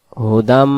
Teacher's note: আমরা এখানে বলবো হাফ পেশ হু দাল মিম জবর দাম হুদাম মিমের তাসদিদ শেষ গুন্না সহ হবে